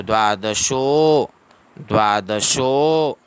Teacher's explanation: उसके बाद में भक्ति योगो, भक्ति योगो, भक्ति योगो नाम द्वादशोऽध्यायः, तो द्वादशो, उसके बाद में ये एस का सिंबल, इसको अवग्र कहते हैं, शो को 2 सेकंड का समय देना है